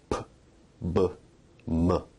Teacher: Bilabial sounds are produced with both lips